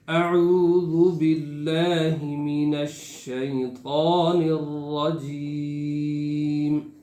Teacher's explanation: شین جب پڑھیں گے تو آواز منہ میں پھیل جائے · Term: تفشی